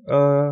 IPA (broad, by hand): ə